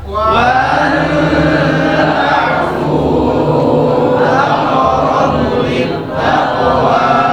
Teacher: Kemudian ain tawassut baina syiddah dan rakhawa. Ta'fu huruf fa, huruf hamas dan rakhawa, panjang dua harakat. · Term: mad jaiz munfasil